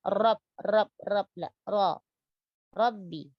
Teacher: tebalkan huruf Ra, ya, dan jangan dibaca dengan getar yang berlebihan. Ra.